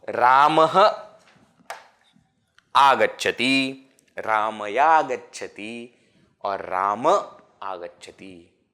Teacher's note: And that way, what remains is visarga is dropped. Visarga is becoming ya, and then that ya is getting dropped.